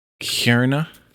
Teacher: it's almost like a KH, but it's a little harder or a little more phlegmy than a H would be